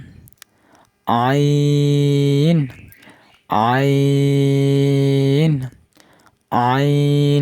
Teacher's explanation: হলকের মধ্যে হালকা চাপ দিয়ে উচ্চারণ করতে হবে